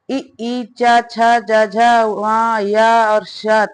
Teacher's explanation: इनका उच्चारण तालु और जीभ के स्पर्श से होता है। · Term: तालव्य वर्ण